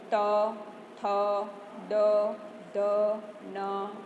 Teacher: આપણી જીભ દાંતને અડે છે ત્યારે ત, થ, દ, ધ, ન જેવા સ્વરોનો ઉપયોગ, જેવા ઉચ્ચારણો, જેવા અક્ષરોનો ઉચ્ચાર થાય છે એને દંત્ય ઉચ્ચારણ કહેવાય છે.